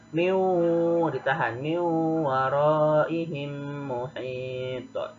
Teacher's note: cara membacanya dengan meleburkan bunyi huruf yang pertama kepada huruf yang berada di hadapannya sehingga terdengar dengung, ya. Nah, dibacanya ditahan 2 harokat, ya. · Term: idgham bi gunnah